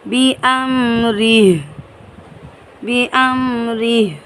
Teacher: کھڑا زیر کو ختم کر کے ہا کو ساکن کر کے پڑھیں گے